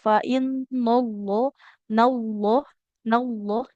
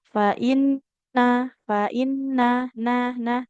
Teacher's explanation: fainna nanya tipis Allah baru tebal lamnya. Jadi jangan fainnallah nallah nallah.